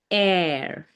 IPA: ɛə